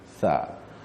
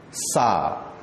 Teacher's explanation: Kalau huruf tha, lidah kita belakang gigi, tha. Kalau sin, sa, lidah kita di tengah-tengah di langit